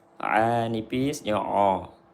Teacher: jangan baca ain ke hidung, dia bukan huruf hidung, dia huruf tengah tenggorokan. A nipis, huruf istifal.